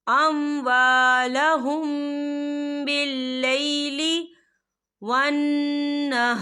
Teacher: युनफ़िक़ूना अम्वालहुम बिल्लैली, या देखिए अम्वालहुम, यहाँ मीम साकिन है और मीम साकिन के बाद जो है बा आ रहा है, तो यहाँ पर इक़फ़ा शफ़ी होगा और हम यहाँ गुन्ना भी करेंगे।